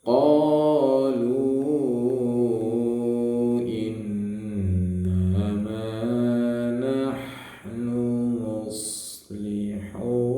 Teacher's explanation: Qalu, lunya panjang 4 harokat ya.